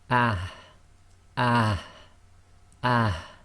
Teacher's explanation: The next one is the soft ha, which comes from the bottom of the throat.